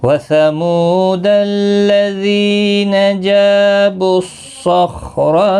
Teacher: صاد مستعلیہ ہے، پر پڑھا جائے گا، خا بھی پر پڑھا جائے گا، را بھی پر پڑھا جائے گا زبر کی وجہ سے، و الف مدہ ہے، 1 الف کی مقدار کے برابر کھینچ کر پڑھیں گے، دال ساکن پر قلقلہ بھی ہوگا وقف کی صورت میں 3 سے 5 الف کی مقدار کے برابر کھینچ کر وقف کریں گے۔